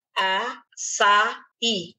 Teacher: A tônica desta palavra está no I. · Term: oxítona